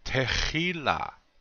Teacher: The accent is on the second syllable, chi.